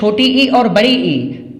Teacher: छोटी ई और बड़ी ई तालु से उच्चारित होते हैं